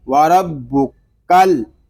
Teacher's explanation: کاف کو لام کے ساتھ ملائیں گے کیونکہ ساکن حرف اپنے سے پہلے والے متحرک حرف سے مل کر پڑھا جاتا ہے، لام ساکن ہے، اس کو سکون کے ساتھ پڑھیں گے، وربکل، اس کو وربکل نہیں پڑھیں گے، وربکل۔